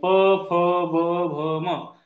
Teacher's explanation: प फ ब भ म यांचा उच्चार करताना ओठ एकमेकांना चिटकतात, आणि म्हणून या सगळ्या वर्णांचा उच्चार हा ओठांवर आहे, म्हणून यांना ओष्ठ वर्ण म्हटलं जाते.